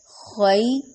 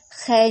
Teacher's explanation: خا موٹے حروف میں سے ہے، خی یائلین ہو رہا ہے، لمبا نہیں ہوگا، نرمی سے ادا ہوگا اور مجہول بھی نہیں ہوگا، خے نہیں کریں گے.